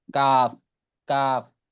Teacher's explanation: জিহ্বার গোড়া 5 নম্বর মাখরাজ জিহ্বার গোড়া থেকে একটু আগে বাড়িয়া তার বরাবর উপরে তালুর সঙ্গে লাগাইয়া মধ্যখান পেঁচানো কাফ, কাফ। অর্থাৎ জিহ্বার গোড়ার একটু আগে বাড়িয়ে তার উপরে যে তালু আছে তার সাথে লাগাইয়া কাফ উচ্চারণ হবে